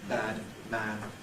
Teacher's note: what's now fashionable is a much opener bad man